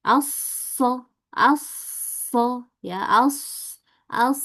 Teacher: Dia punya sifat khawah atau mengalirnya banyak dan safir berdesis juga.